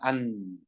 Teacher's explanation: 나를 발음하려 할 때 아니면 아 하다가 안 하면은 혀 끝이 윗잇몸에 이렇게 닿아 있는 채로 발음을 하게 됩니다